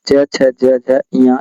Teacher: ये च वर्ग का उच्चारण स्थान तालु से होता है